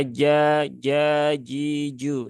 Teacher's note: letaknya di tengah lidah langit-langit atas